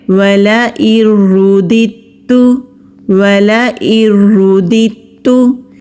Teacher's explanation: یہاں پر 2 دال ہیں تو دال ایک ہی ادا ہوگا، تا کو مضبوطی کے ساتھ پڑھیں گے